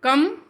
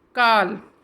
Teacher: दीर्घ स्वरों के उच्चारण में हर्ष स्वर से दुगना समय लगता है।